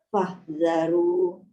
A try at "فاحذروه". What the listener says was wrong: Bunyikan ha juga belakang. Fahdharu.